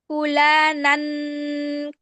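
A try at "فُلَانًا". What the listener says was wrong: না, ফুলালান গুন্না করলে কেন? ফুলানান, ফুলানান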